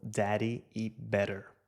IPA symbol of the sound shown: ɾ